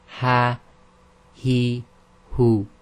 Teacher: say the ha quite normally like you do in English, with a tiny bit more emphasis on the chest